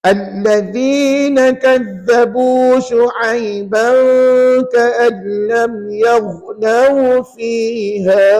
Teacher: Jangan lupa hukum dengung pada kalimah Syu'aiban ka'an lam.